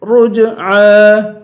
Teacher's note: را کو جیم سے ملائیں گے، رج، اور جیم پہ قلقلہ کریں گے